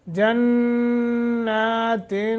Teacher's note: نون مشدد ہے، یہاں غنہ ہوگا۔